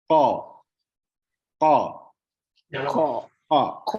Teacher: ko, diangkat pangkal lidah ya, diangkat. Ko, pangkal lidah paling belakang kan diketemuin dengan langit-langit